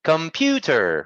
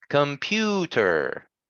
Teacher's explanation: Yes, and it has 3 syllables. The second syllable is stressed.